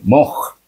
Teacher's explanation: Kha Kha iaitu hujung halkum